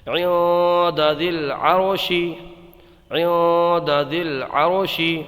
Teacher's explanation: یہاں پر اخفا ہوگا، نون ساکن کے بعد حروف اخفا میں سے دال آیا ہے تو یہاں پر غنہ کر کے پڑھیں گے، اخفا میں غنہ کر کے پڑھا جاتا ہے.